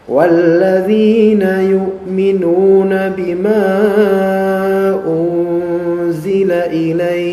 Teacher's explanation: Dia ada hukum mad namanya mad lin. Mad lin. Ya, dia bisa 2, 4 atau 6 harokat. Ya. Jadi kalau misalnya antum berhenti di ilaik, walladzina yu'minuna bima unzila ilaik, boleh 6 atau boleh 4 atau boleh 2.